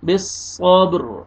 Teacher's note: وقف کی صورت میں را ساکن ہو جائے گا را کو پر کریں گے